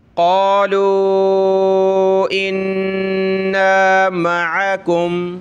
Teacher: नून colourful है यानी इसके ऊपर तशदीद है तो गुन्ना करते हैं